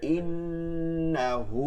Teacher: নুনে তাসদীদ আছে ওয়াজিব গুণা করে পড়তে হবে